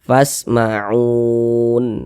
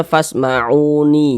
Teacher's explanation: Ini kita berwakaf di huruf nun tidak dibaca panjang. Karena kita berwakaf di huruf nun, ya huruf nunnya kita sukunkan seperti itu. Sehingga dibaca fasma'un.